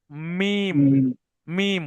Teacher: মিম হলো দুই ঠোটে শুকন অংশ হতে মিম উচ্চারিত হয়। অর্থাৎ যখন মিম বলবেন বাইরে শুকন জায়গা মুখটা মুড়ে দেবেন।